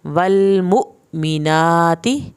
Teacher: वल पे लाम नहीं हिलाना, मु पे झटका लगेगा। मीनाती खड़ी ज़बर खींच के पढ़ें ताकि ज़ेर को ना खींचे।